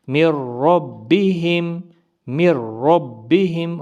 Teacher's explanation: میم اور را کو ملا کر غنہ نہیں کریں گے ، میم را زیر مر، را با زبر رب، با زیر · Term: ادغام